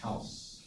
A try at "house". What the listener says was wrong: When you say house, good. Need to hear the S.